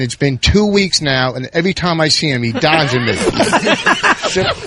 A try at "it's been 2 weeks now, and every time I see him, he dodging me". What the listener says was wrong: Because you're not breathing. No, just take a breath. You're saying a whole paragraph on one breath.